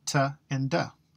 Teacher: these are both alveolar the tip of your tongue hits the alveolar when you say them both are plosives the only difference is one buzzes the vocal